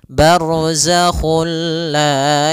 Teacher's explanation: juga sendiri itu idgham yang kita namakan juga idgham Kamil yaitu kita memasukkannya secara utuh secara seluruhan kepada huruf lam sehingga tidak menyisahkan sedikit daripada bunyi huruf nunnya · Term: idgham bila ghunah